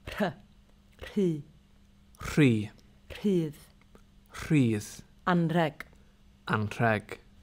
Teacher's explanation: RH is just like Welsh R, but there's no voice involved, so you whisper.